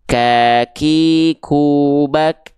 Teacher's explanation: ketika kita melafalkan kaf, dia pangkal lidahnya naik.